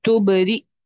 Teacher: تبری، حمزہ کے اوپر، سوری یا کے اوپر ہی حمزہ ہے، تو یعنی اس میں یا کا رول نہیں ہے. را کے فوراً بعد حمزہ کا مخرج ادا ہوگا، اس وجہ سے یہاں پر مد نہیں ہے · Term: حمزۃ القطع